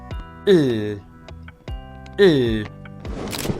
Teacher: l l Place of articulation, the tongue touch the alveolar ridge, as you know. Manner of articulation, air flows around the sides of your tongue, okay? And that makes it a lateral approximate, okay? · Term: clear l